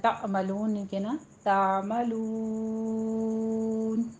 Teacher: نہیں کہنا، تعملون، عین پر مد عارض وقفی ہو جائے گی، واو مدہ کے بعد وقف ہو رہا ہے تو یہاں پہ 6 کاؤنٹ کرنا ہے۔